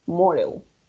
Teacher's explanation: La D entre 2 vocales puede sonar como una R o como una D.